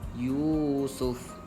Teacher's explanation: pastikan sama je baca dia panjang kadar 2 harakat sahaja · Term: mad asli